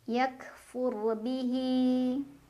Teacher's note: ro sukun dibacanya tafkhim karena ro sukun didahului huruf berbaris di atas. Jadi ro-nya dibaca dengan tebal. Pangkal lidah kita terangkat.